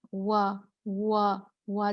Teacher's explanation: زبان جو ہے وہ پیچھے سے تھوڑی اٹھتی ہے، اوپر تالو کو بالکل نہیں لگتی، تھوڑا سا فاصلہ ہے، لیکن کیا ہے، اٹھتی ہے زبان۔ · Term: واو مد